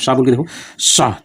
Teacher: बहुत ज्यादा कम जगह रहती है कि हवा निकलने के लिए भी संघर्ष के साथ बाहर निकलती है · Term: संघर्षी व्यंजन